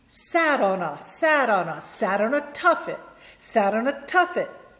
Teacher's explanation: And then I'm also gonna link the N to the A, right?